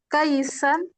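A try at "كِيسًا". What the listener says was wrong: Bukan kai.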